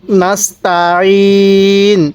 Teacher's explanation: সিনটা চিকন করে আইনটা উচ্চারণের সময় গলার মধ্যে চাপ দিয়ে পড়লে আইনটা সহি উচ্চারণ হয়। তাহলে নাস্তাইন।